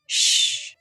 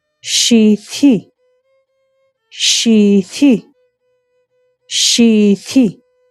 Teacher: La X es una consonante fricativa palatal sorda. Su sonido es similar al de la S, pero se articula en la parte media de la boca, con la lengua elevada hacia el paladar. · Su sonido es similar al de la S, pero se articula en la parte media de la boca, con la lengua elevada hacia el paladar. Es equivalente al sonido SH del inglés, el sonido que se hace al pedir silencio.